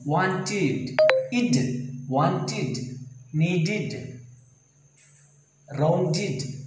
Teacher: this ed is pronounced like id. Say, unstressed sound, unstressed vowel sound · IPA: /id/